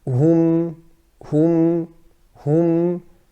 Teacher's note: That meme in the end has a ghunnah, even though it is sakin.